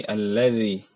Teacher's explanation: Jadi ujung lidah diletakkan di antara gigi atas dan bawah. Jadi diletakkan ya, tidak digigit, diletakkan saja.